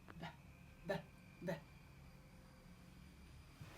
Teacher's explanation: b is called bilabial plosive